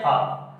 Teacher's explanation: जो हा है उसका उच्चारण स्थान है कंठ